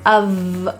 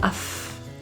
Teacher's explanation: The word of is actually pronounced with a V sound. It's voiced, of, rather than f, as it's spelled.